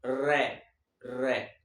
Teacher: पित या लुंठित प्रक पित यानी जिसमें वाइब्रेशन हो मोह में उच्चारित करते समय जीवा दो बार वाइब्रेट करे